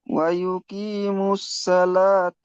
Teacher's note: মিম, ওয়াও আর আলিফ এটা বাড়তি অক্ষর বাদ যাবে। মিমটা গিয়ে ডাইরেক্ট সাদার সাথে যোগ হবে, এখানে আলিফ লাম বাদ যাবে।